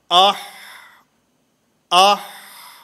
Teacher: حلق کے درمیان سے یہ آواز نکل رہی ہے، اور جب آواز بند ہوتی ہے تو اسی حلق کے درمیان میں بند ہوتی ہے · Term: وسط حلق